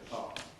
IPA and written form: dɪˈpɑːʔmənʔ (department)